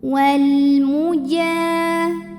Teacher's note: Kemudian alif lamnya dinamakan dengan alif lam qamariyah karena alif lam menghadapi huruf qamariyah yaitu mim, maka lam sukun dibaca jelas atau disebut dengan izhar qamari.